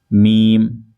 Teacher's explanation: میم دونوں ہونٹوں کے خشک حصہ سے، میم، تو دیکھیں آپ میم کو جب ہم ادا کریں گے تو ہمارے ہونٹ کے تھوڑا سا باہر والے حصے آپس میں ملتے ہوئے نظر آئیں گے آپ کو، ٹھیک ہے، میم۔